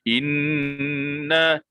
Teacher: Inna, sebab saya tekan dan kita terus sampaikan kepada khayshum. Inna, bila kita lepas jangan khayshum lagi. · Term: wajibul gunnah